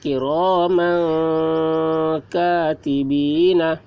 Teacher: میم کے اوپر 2 زبر ہیں، 2 زبر کو تنوین کہتے ہیں، تو تنوین کے بعد حروف اخفا میں سے کاف آ رہا ہے، کاف یہ بھی حروف اخفا میں سے ہے، تو تنوین کے بعد حروف اخفا میں سے کاف آ رہا ہے، اس لیے تنوین کی آواز کو ناک میں چھپا کر پڑھیں گے، اس کو اخفا کہتے ہیں